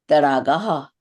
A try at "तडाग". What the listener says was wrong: दीदी ये ना जो संस्कृत में ड़ शब्द नहीं होता है, तडागाहा, ड होता है, ड़ नहीं होता है,